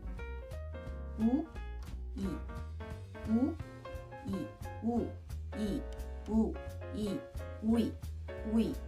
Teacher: most younger generation pronounce it as a diphthong by making two sounds quickly, which are 우 and 이.